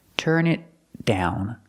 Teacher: The T in it is a stop T.